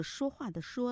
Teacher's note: 说话的说啦，要翘舌音了 、嗯、我听到平舌音了啊，大概就是怎么办呢，你看你不在我们怎么办呢，那个办字啊、嗯、懒音、哦、懒的怎么办呢，